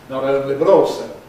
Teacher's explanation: You retain the voicelessness, you retain the plosive quality, but you lose the place of articulation. In American English, you keep the place of articulation alveolar, you keep the plosive quality, but you lose the voicelessness, giving continuous voicing between the vowels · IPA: [ˈnɑt̬ ˈoʊnli bət̬ ˈɔːlsoʊ]